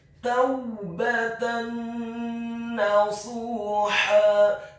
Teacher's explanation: Huruf shadnya dibaca tafkhim dengan posisi bibir bawah kita agak tertutup, dibaca tafkhim atau tebal, dhammah 2 harokat karena setelahnya ada huruf waw sukun, dan huruf ha-nya dibaca tipis, tarqiq, nyaring dan halus fathah 2 harokat karena setelahnya ada alif kemudian diwaqafkan. · Dalam hal ini adalah huruf nun yang tasydid dan fathah. Maka hukum bacaannya adalah memasukkan dengan dengung idgham bil gunnah. Taubatan nasuha, kata nasuha, huruf nunnya ditasydidkan fathah 1 harokat. · huruf ba-nya dibaca tipis, fathah 1 harokat